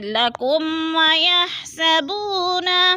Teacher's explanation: لکم میم ساکن کے بعد واو آ رہا ہے تو ادھر اظہار شفوی ہے، ادھر غنہ نہیں کریں گے